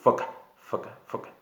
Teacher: La única letra labio dental es la F.